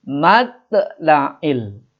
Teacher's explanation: Matla'il to dibaca qalqala, adanya di tengah, matinya asli jadi disebut qalqala sugro, qalqala pantulan kecil.